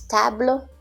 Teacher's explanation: as you notice the time for each syllable in French is almost the same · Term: syllable time language